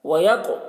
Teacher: قاف کو پر پڑھیں گے، قاف حروف مستعلیہ میں سے ہے، اور قاف میں قلقلہ کریں گے کیونکہ قاف حروف قلقلہ میں سے ہے.